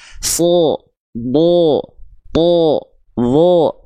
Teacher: Huruf tebal itu ketika dia berharokat fathah, dia akan lebih terdengar condong seperti vokal o.